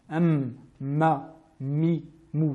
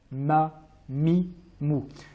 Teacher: on utilise donc le point d'articulation suivant, les lèvres refermées, tout en prononçant le nasillement venant du nez, comme nous l'avions vu pour la lettre nun. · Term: la lettre mim